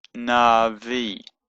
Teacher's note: So it's na, v, and that's a v, but because it's followed by a yod, it becomes an e sound, navi. And the aleph is silent, but it kind of lengthens the e sound, so it just makes it a bit longer.